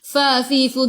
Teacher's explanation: Fafifu gigi atas menyentuh perut bibir bawah.